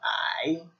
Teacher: and it's that third tone, so you kind of go out